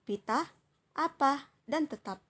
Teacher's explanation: p ini termasuk dalam bunyi labial bunyi hambat dan tak bersuara